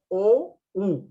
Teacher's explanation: tu lengua se contrae y se va a la parte posterior de tu boca o pronunciarlo y siente como la lingüista tu lengua se va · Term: vocales posteriores